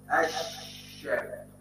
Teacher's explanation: الذي ينطق هو الشين وهو حرف من حروف الهمس · اللام لا تنطق ولكن تنطق الشين التي دخلت عليها تلك اللام فصارت هناك بدل اللام شين ساكنه بجوار الشين المفتوحه تكتب شين